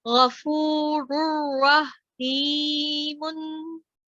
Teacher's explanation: हा की जो आवाज है ना, ये हलक में थोड़ी सी रगड़ की तरह से आएगी, तो जब भी आप इसको करें तो कोशिश करें कि जैसे हाँ, जो आवाज है आपकी, जैसे हम ग्लासेस साफ करते हैं ना ऐसे, तो जी आप कोशिश करें कि ये वाली आपकी जो आवाज है वो यहाँ से आए।